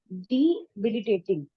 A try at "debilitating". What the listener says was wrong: ऐसा नहीं है. Debilitating. You are segregating. You are segregating D. Then belating. ऐसा नहीं है. Debilitating.